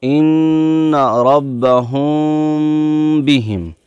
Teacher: میم ساکن کے بعد با آئے تو گنہ کے ساتھ اخفاء ہوگا، اس کو اخفاء شفوی کہتے ہیں۔